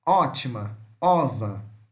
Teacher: O é uma vogal semiaberta posterior oral arredondada.